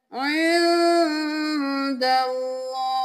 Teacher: اللہ کا لفظ موٹا پڑھیں گے کیونکہ اس سے پہلے والے حرف پر زبر ہے · نون پہ اخفا ہے، آواز کو ناک میں چھپائیں گے